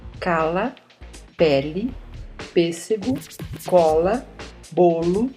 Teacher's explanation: Quanto ao papel das cavidades bucal e nasal, as vogais podem ser orais, A, E, I, O, U. A corrente de ar ressoa somente na cavidade bucal.